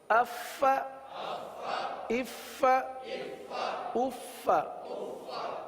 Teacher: فا کے بجائے پا پڑھ دیتے ہیں. تو اف، فا کی یہ آواز سانس والی آواز یہ ظاہر ہونی چاہیے